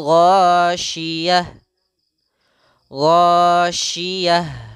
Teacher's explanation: Ketika kita dapati ada ta ini namanya ta marbutah berada di akhir kalimat, maka ta tersebut berubah menjadi ha. Maka di sini bukan ghasyiyat tapi ghasyiyah disukunkan.